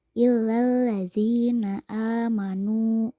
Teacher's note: Kata nu dipanjangkan 2 harokat. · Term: mad tobi'i